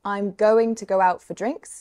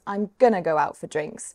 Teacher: Going to becomes gonna.